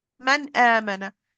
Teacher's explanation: noon top of the tongue hamza the farthermost part of the throat